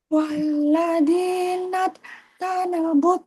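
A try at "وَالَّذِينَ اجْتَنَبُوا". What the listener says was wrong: Naj. Qalqalahnya ketinggalan.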